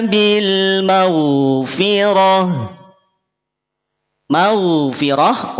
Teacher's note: ma tanpa disertakan dengan napas yang mengalir Itulah kenapa gain itu tidak perlu ada desisnya tidak perlu ada hamsnya tidak perlu ada aliran nafasnya karena gain tidak punya sifat hams dia hanya punya sifat jahar ya bukan hams tapi lawannya adalah · karena gain tidak punya sifat hams dia hanya punya sifat jahar ya bukan hams tapi lawannya adalah jahr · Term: sifat rakhwah